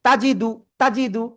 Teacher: তা জবর তা একটু টান হয়ে গেছে, দ্রুত বলতে হবে তাজিদু